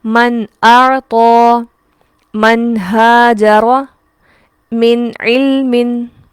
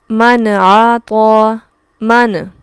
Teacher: نون کو ہلانا بھی نہیں ہے، کیونکہ نون حروف قلقلہ میں سے نہیں ہے